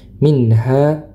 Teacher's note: Dihukumi jelas nun sukunnya dibaca jelas karena bertemu dengan huruf-huruf halqiyah. Huruf-huruf yang keluar dari tenggorokan ini di antaranya adalah huruf ha. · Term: izhar